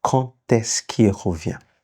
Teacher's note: Now, the rule says when quand is followed by a word that starts with a vowel, like est-ce que. The D, when you make the liaison, your link, the D will be pronounced t.